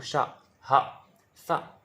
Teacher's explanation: मतलब कुछ भाप सी मुंह में से बाहर आएगी, ऊष्मा सी आएगी कुछ, तो ये ऊष्म व्यंजन है